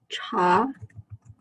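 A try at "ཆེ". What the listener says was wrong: Cha. First column. Cha. With a top. Makes it che because it turns to the umlaut sound.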